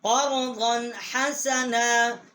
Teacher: یہاں ہم نے غنہ نہیں کیا، آگے حروف حلقی ہے